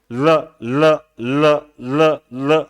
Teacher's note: ल बोलते हैं तब हमारे मुख के पार्श्व भाग से हवा निकलती है, इसीलिए हम ल को पार्श्विक ध्वनि बोलते हैं।